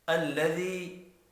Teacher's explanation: یا کے اوپر چھوٹی مد ہے، 3 الف کے برابر کھینچ کر پڑھنا ہے۔